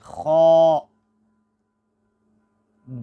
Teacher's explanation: خو کا جو مخرج ہے وہ ہے حلق کا پہلا حصہ، یعنی زبان کی جڑ کے بعد جو جہاں سے اس پیپ کا جب آغاز ہوتا ہے اس سے حرف خو ادا ہوتی ہے، خو۔